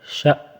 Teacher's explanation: شأو نہیں پڑھنا ہے، اس کو شأ پڑھنا ہے، شأ رکنا ہے بس وہاں پہ حمزہ کے اوپر